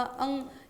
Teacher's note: पंचमाक्षर का उच्चारण स्थान कंठ भी है और साथ-साथ कि ये नासिका से भी होता है।